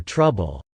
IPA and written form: trʌbl (trouble)